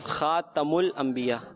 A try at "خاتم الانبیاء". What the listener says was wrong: خاتم الانبیاء. خاتم ال نہیں ہے. خاتم الانبیاء.